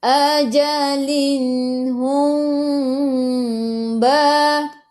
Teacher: Mim tak ada sukun kena dengung bila mim bertemu dengan ba. Ikhfa syafawi.